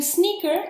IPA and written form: ˈsnɪkə (SNICKER)